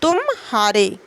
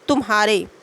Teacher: शीघ्र संक्रमण होता है किंतु तुम और हारे में पूर्वतयारी होता मा और ह के बीच कुछ विराम अवसान होता है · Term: संगम